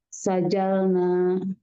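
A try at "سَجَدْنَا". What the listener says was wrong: lamnya ganti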